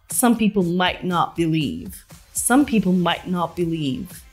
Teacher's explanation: the T at the end of Might and not is pronounced with a stop T sound might not together this sounds like some people might not believe